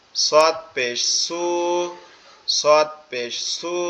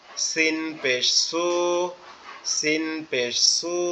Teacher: সদেরটা একটু মোটা উচ্চারণ হবে আর সিনেরটা একটু পাতলা উচ্চারণ হবে